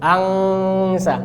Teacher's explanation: nempel pangkal lidah dengan langit-langit belakang. Ini bunyi ngeh.